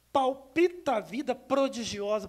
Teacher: E olha lá, você, os P's, a literação dos P's. Você vai falar a letra P, os lábios, né? Bilabial surda.